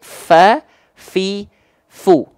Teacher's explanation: maka pastikan dia harus mengalir nafasnya nama sifatnya adalah hams